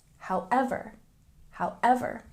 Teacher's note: with this word, we have a stress on the second syllable.